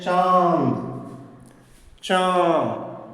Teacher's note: चंद्रबिंदु का उच्चारण नाक और मुंह से होता है, दोनों से, सिर्फ नाक से नहीं बल्कि मुंह से भी